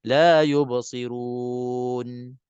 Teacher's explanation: nak baca kita kena qatun nafas kita nak kena habsun nafas kita nak kena tahan nafas di sini supaya tidak ada lantunan dengung di situ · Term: nun mati